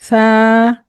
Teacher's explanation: زبان کی نوک، اوپر کے جو دانت ہیں، ثنایا علیہ کہتے ہیں انہیں، ان کے اندرونی کنارے کو ٹچ کرے، تو جب زبان دانتوں سے باہر نہ نکلے، اندرونی کنارے سے ٹچ کرے تو حرف سا ادا ہوتا ہے۔